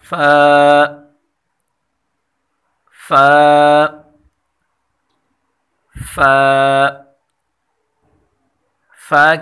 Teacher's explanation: फ़ा की मखरज है ऊपर वाले दो दांतों के किनारे और निचले होंठ के अंदरूनी हिस्से के मिलने से अदा होता है।